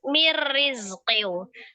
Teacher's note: Kemudian nun sukun ketemu dengan huruf ra, idgham bila gunnah. Diidghamkan, ditasdidkan ke huruf ra, tetapi tidak disertai dengan gunnah